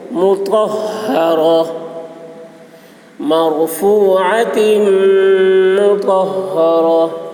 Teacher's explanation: طا کی آواز موٹی ہوگی، ہا کی آواز بھاری ہوگی اور رو پر ہوگی